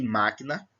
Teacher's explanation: Se nós olharmos aqui, eu tenho última sílaba, penúltima sílaba, antepenúltima sílaba. Máquina, o má é forte. Então, má é a sílaba tônica.